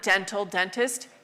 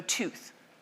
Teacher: A d in Indo-European, which we keep in the Latin, dental, dentist, became t, so tooth.